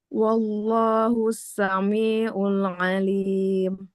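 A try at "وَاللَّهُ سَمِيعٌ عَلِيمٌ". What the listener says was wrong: Untuk bacaannya di sini koreksinya yang pertama itu panjang pendeknya Ibu Nah, terutama di akhir-akhir kata ya huruf-huruf terakhirnya. Nah, itu biasanya suka jadi panjang ya.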